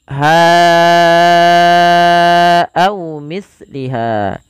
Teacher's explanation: kita panjang untuk hanya 4 harokat atau 5 harokat karena ia mad jaiz munfasil